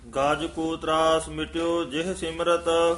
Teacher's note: ਗਜ ਪੋਲਾ ਹੀ ਬੋਲਣਾ ਹੈ, ਹਾਥੀ ਦਾ ਵਾਚਕ ਹੈ, ਗੱਜ ਨਹੀਂ ਕਹਿਣਾ ਹੈ।